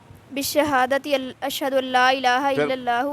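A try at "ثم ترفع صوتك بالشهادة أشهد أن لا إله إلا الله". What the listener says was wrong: تک آگے پڑھے نا، لفظ چھوڑ رہے ہیں.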